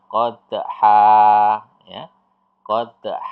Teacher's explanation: dia tidak akhir ayat tetapi kita membacanya berhenti atau diwakafkan maka yang Han Ini berubah menjadi fathah dengan panjang dua harakat